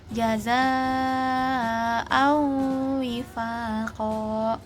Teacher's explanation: jadi lafal nun dilebur ke wau yang tersisa adalah gunanya. Jadi lafalkan wau tasdid dengan gunah yang jelas. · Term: idgam naqis, idgham nakis